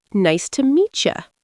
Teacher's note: Meet ends with T, you starts with Y. When they crash, they turn into cha.